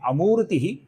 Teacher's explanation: मु दीर्घ है ती ह्रस्व है